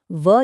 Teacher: ये एक अपवाद और विशेष वर्ण है, क्योंकि इसके उच्चारण में ऊपर के दांत और नीचे का होंठ इस्तेमाल होता है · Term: दंतोष्ठम